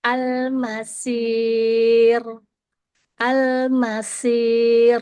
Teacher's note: Jadinya dia terbaca tipis karena mahrojnya dia berada di huruf sin dan terdengarnya tipis. Kemudian huruf sinnya dibaca tafkhim atau tebal. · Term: dibaca tarkik atau tipis